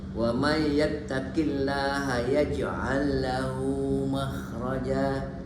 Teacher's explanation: Jadi ada dua lam dia masukkan wasalkan.